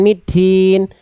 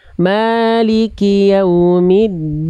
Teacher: Jangan ada percikan nafas dari huruf dal, karena dal sifatnya adalah jahr, bukan hams.